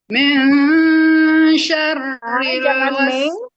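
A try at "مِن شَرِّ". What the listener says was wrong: Jangan meng tapi ming. Mil. Coba.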